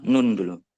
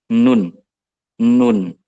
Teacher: Torful lisan itu artinya adalah ujung lidah. Ujung lidah yang menyentuh langit-langit paling bawah, atasnya gigi atas.